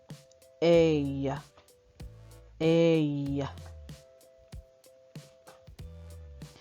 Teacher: our a is actually a glide it goes from the short e followed by the Y sound and sometimes depending on your accent by a long e sound